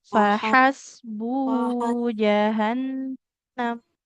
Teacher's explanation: Faha, huruf H-nya di tengah tenggorokannya.